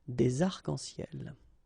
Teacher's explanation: we don't really pronounce this final S, so phonetically it's almost the same, but then we've got this liaison between the two, des arcs-en-ciel.